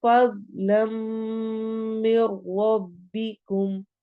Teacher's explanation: लम मीम पे इदगाम गुन्ना हो रहा है, मिर रब्बिकुम में भी अगेन इदगाम हो रहा है लेकिन बगैर गुन्ना के, चूंकि रॉ आ गया है।